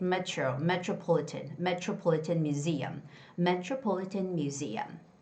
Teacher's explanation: Metro metro. Whenever there's a T and R together, it's got to be ch similar to the ch sound. · we always see the word museum with the second syllable stress, and the word metropolitan, metro.